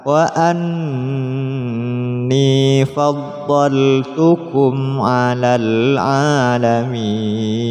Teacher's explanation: nun tasydid didengungkan, ditahan